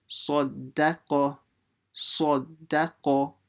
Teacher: So Sa, full mouth. Da, empty mouth. Qa, full mouth. So you're switching full, empty, full.